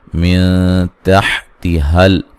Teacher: من تحتہل تا کو باریک پڑھیں گے ، اور یہاں لام کو ہلانا نہیں ہے، انہار نون ساکن